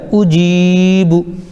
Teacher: جی کو کھینچیں گے، او اور بو جلدی پڑھیں گے ، جی کھینچائے گا، اجیبو، یا پیش یو، واو الف زبر